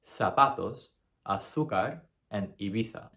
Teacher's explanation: in Spain, the Z is actually pronounced the exact same way. So it's pronounced th. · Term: Spanish lisp